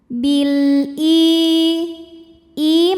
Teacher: karena alif lam menghadapi huruf qamariyah yaitu hamzah, maka lam dibaca jelas atau disebut dengan idhar qamari